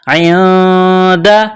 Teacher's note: نون ساکن کے بعد دال ہے، حروف اخفا ہے تو آواز ناک میں چھپائیں گے. اس ناک میں آواز چھپانے کو اخفا کہتے ہیں.